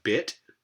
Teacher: that b sound, a voiced labial stop, is going to be at the beginning of a word and is followed by the lax vowel I